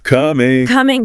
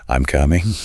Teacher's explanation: for simple statements, it's usually a falling tone. I'm coming. The voice drops down at the end.